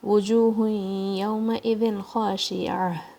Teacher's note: خا کے بعد یہاں پہ کھڑا زبر ہے 2 کاؤنٹ. شین کے نیچے کسرہ، ایک ہی کاؤنٹ دینا ہے اس کا.